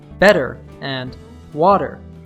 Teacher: the T sound like a soft D, which is called a flap or an American T · the T sound in better and water has vowel sounds on both sides of the T, and both are stressed on the first syllable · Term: flap T